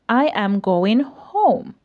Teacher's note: your voice Falls at the end